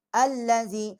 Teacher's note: حمزے کی جو ہم مخرج ہے وہ حلق سے نکالیں گے، اور لام جو ہے اس کو نرم پڑھیں گے